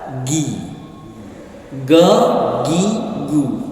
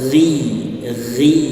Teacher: Di situ kita tidak berikan syiddah. Kalau kita berikan syiddah artinya tertahan suaranya, keluarnya bakalan gi, ge, gi, gu ya. Tetapi mengalir suaranya rakhawah